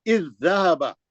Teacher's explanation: زال ساکن کا زال مشدد میں ادغام ہو گیا